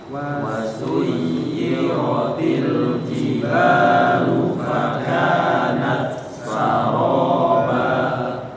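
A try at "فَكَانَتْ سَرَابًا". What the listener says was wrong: Ya, kalau ini izhar ya. Bukan fakanat saraba tapi harus fakanat sa. Ya beda. Tak sama sa salah. Dia enggak satu makhraj, jadi harus diizharkan. Fakanat sa.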